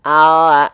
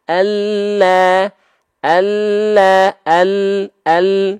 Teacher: huruf lam itu kan kita punya samping lidah nih pinggir lidah huruf lam itu keluar dari tepi lidah bagian depan yang kiri tepi lidah bagian depan yang kanan kanan dua-duanya menyusur sampai ke ujung lidah disentuhkan ke langit-langit kita